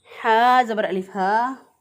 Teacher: इस हा को हम अक्सर हलक से अदा करेंगे, यानी गले का वो हिस्सा जो सीने की तरफ होता है उसको अक्सर हलक बोलते हैं